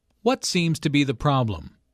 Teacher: the intonation Falls at the end of the question